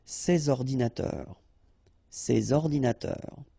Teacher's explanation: so you should make the liaison between S and O, ces ordinateurs, ces ordinateurs.